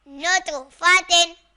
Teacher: تا دو زیر تن، نتو فاتن۔ یہاں تو حروف قلقلہ میں سے تو اس میں بھی قلقلہ کریں گے